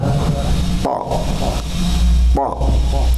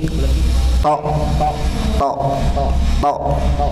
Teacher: ujung lidah ditempelkan ke gigi seri atas, kemudian dekat gusi itu. Sifatnya tebal. Ya, menebal suaranya. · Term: isti'la